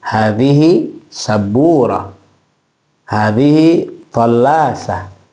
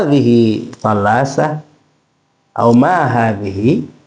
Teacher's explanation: hadihi sabburah intonasinya hanyalah informasi informasi itu lurus